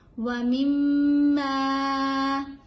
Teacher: یہاں پہ میم کے اوپر ہم نے غنہ کرنا ہے اور میم کو تھوڑا سا لمبا پڑھنا ہے کیونکہ اس کے آگے الف ہے.